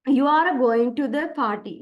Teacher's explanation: Rising intonation at the end of a sentence